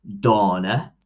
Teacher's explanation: a vowel at the end is a lazy vowel so you just pronounce this half-hearted half-heartedly